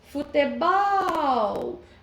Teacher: A sílaba mais forte foi o bol, a última sílaba. Então, se a última sílaba é a sílaba tônica, ela vai ser uma palavra oxítona.